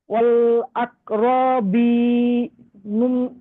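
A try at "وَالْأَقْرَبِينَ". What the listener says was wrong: খুব সুন্দর হয়েছে পড়া, শুধুমাত্র এই রটা টান হয়ে গিয়েছে, এটা টান হবে না। আকরবি, অল আকরবি, না এই বিটা শুধু টান হবে।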